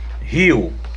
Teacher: Em rio, o I, ele é uma semivogal, porque ele está acompanhado da letra O.